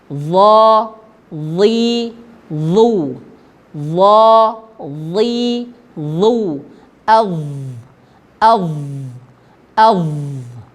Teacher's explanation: ujung lidah menyentuh ujung gigi seri atas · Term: huruf do